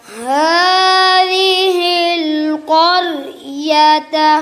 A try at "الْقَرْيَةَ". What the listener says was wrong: قاف بھی موٹا، را بھی. قریۃ.